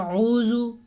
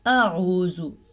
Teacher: हमज़ा यानी कि अलिफ और आइन दोनों की अलग अलग आवाज़ और अलग अलग मखरज होना चाहिए।